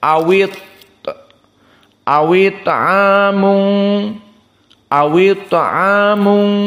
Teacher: maka harakatnya dipindahkan kepada wawi dari Hamzah yang kasrah tadi it'amun hamzahnya hilang kasrahnya tetap ada dipindahkan kepada wawi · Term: naql